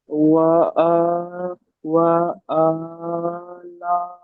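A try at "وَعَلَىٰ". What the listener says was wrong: ওয়া আ, টান নেই। আমি বলি ওয়া আ টান নেই।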